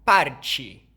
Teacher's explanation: o t antes de i ou e vira tch, como em parte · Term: africação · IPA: [t͡ʃ]